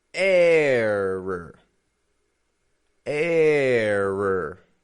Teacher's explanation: Stretching that A sound out there. A. And then flat. Schwa R ending.